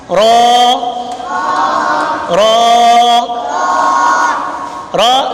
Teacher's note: زبان کا کنارہ پشت سمیت دو دانتوں کی جڑ سے، را جو ہے یہ زبان کا کنارہ پشت سمیت دانتوں کی جڑ سے جب لگتا ہے پھر ادا ہوتا ہے۔